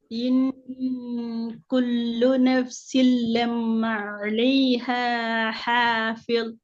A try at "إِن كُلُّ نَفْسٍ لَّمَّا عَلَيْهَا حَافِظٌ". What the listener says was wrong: நீங்க ஓதினத்தை வச்சு எங்களுக்கு விளங்கினது. உண்மையில முதலாவது எழுத்து எல்லாம், அதுக்கு பின்னால மீம், அதுக்கு பிறகுதான் அலிஃபாக வாரத்தை நாங்க பார்க்கல.